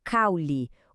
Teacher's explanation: o U é mais fraco e fica grudadinho no A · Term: ditongo